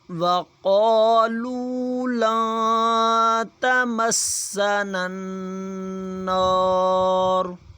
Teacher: لن یہاں پہ اخفا کیا جائے گا، نون ساکن ہے اس لیے